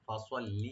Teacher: ফাসওয়াল লিনে টান টানবেন না, সোয়াদ মোটা হবে।